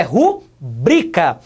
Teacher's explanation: não é acentuada o correto não é rubrika correto é rubricar a segunda sílaba é que é a mais forte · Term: paroxítona